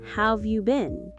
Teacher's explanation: The word have becomes of.